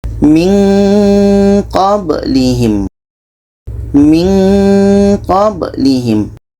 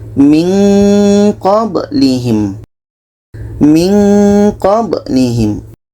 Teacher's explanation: Ketika kita menyebut nun, kita sudah merasakan huruf qa, maka seolah-olah ada bunyi eng di situ.